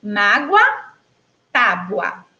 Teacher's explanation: quando eu falo a palavra mágoa, apesar de estar escrita aí com a letra O, eu pronuncio, não é, como se tivesse uma letra U.